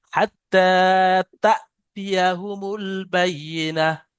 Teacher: হামজা যুক্ত সাকিনকে একটু ঝাটকা দিয়ে পড়তে হয়। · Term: হামজা সাকিন